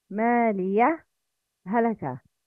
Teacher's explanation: When applying izhar, make a little pause to differentiate the two letters of ha.